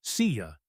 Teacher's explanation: see you is often pronounced see ya in fast speech, where the /J/ connects to the vowel in ya.